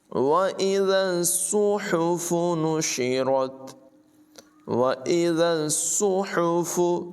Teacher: ज़ाल को सौद से मिलाएंगे, सौद की आवाज़ पुर होगी